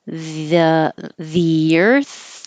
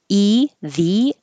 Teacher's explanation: the next word begins with a vowel and then that means there's a invisible y because your tongue's going from the very high the to the